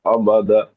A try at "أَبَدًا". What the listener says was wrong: আবাদা, একালে টান হবে।